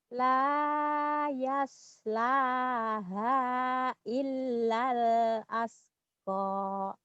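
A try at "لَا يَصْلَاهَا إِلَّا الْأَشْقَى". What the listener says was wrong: Bah, pandai.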